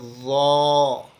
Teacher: अपर teeth की edges और ज़ुबान की टो मिलते हुए। मुंह को खोलेंगे ताकि मोटी आवाज़ निकल सके।